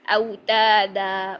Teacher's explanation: अलिफ मद्दा हुआ वाह बारक अल्लाह फी यहां पर है वाउन औ पर हमने मोड़कर औ पढ़ा फिर त को लंबा किया दो हरकात अलिफ मद्दा के लिए